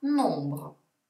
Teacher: la m si sente poco o niente è pronunciata un po come se avessi raffreddore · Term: vocali nasali